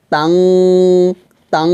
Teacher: আর গুণনা আমরা 2 আলিফ পরিমাণ টেনে পড়ব